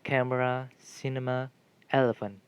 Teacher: nouns polysyllabic nouns is a word of more than two syllables this means having primary stress on the anti-penultimate syllable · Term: antepenultimate syllable